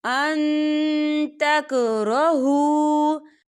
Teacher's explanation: نون ساکن کی آواز کو ناک میں چھپائیں گے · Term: اقفا